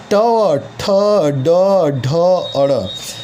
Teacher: ट वर्ग जो है वो मूर्धा से बोला जाता है, उसका उच्चारण स्थान मूर्धा होता है।